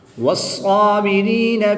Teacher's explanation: صاد کے اوپر تشدید ہے تو اس کی ادائیگی کا خوب خیال کرتے ہوئے اس کو پورا یعنی موٹا پڑھیں گے۔